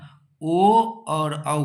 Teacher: कंठ और ओष दोनों से उच्चारण स्थान होता है किसका ओ और औ